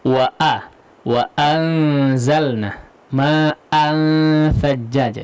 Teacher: Jadi hamzah awalan suaranya itu betul-betul jelas